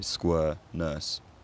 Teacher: the merge quality tends to be closer, generally, to what the nurse vowel is in dialects without the merger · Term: square-nurse merger